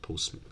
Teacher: three consonants in the middle might be deleted you end up saying Postman okay things that might happen uh